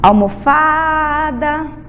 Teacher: Pedacinho fá. É o pedaço mais forte. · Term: sílaba tônica